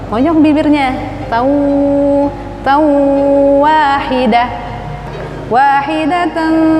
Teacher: tanwin bertemu dengan waw karena makhrajnya waw itu di bibir monyong.